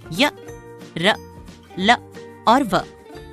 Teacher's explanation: अंतस्थ का अर्थ है स्वर और व्यंजन के बीच में स्थित इनका उच्चारण जीभ तालू दांत और होठों के निकट आने से होता है किंतु श्वास में रुकावट कम होती है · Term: अंतस्थ व्यंजन